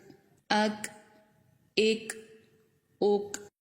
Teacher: اب یہاں پر دیکھیں، قاف جو ہے یہ پر حرف ہے تو زبان تھوڑا پیچھے کی طرف لگتی ہے، اور کاف جو ہے باریک حرف ہے تو زبان تھوڑا آگے کی طرف لگتی ہے · کاف میں ہماری زبان کی جڑ تالو کے سخت حصے سے لگے گی تو کاف ادا ہوگا۔